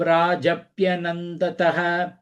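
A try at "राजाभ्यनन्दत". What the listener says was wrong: Nandata, no visarganga illa.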